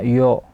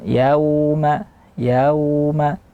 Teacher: ya bunyi ya fathahnya sempurna tidak bercampur dengan bunyi damah jadi seperti nampaknya yo Yauma tidak ada bunyi harakat fathah yo